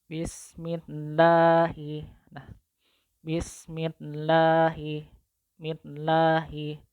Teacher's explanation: Sebelum lafaz jalalah Allah itu kan ada huruf mim yang berharokat kasrah. Maka lam jalalahnya wajib dibaca tarkik.